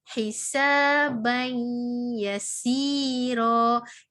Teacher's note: Maka cara bacaannya hisaban yasira, iaitu huruf ba ini kita terus masukkan kepada makhraj huruf ya, iaitu kita membunyikan dalam keadaan membaca huruf ya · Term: idgham